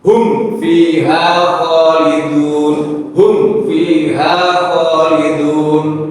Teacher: Jadi ada hentakan. Ya, mengapa? Karena mimnya tidak dialirkan. Harusnya hum fiha khalidun, hum dialirkan.